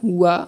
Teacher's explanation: वा का उच्चारण स्थान दंत ओष्ठ हो जाएगा। वा मतलब दंत ओष्ठ हो जाएगा।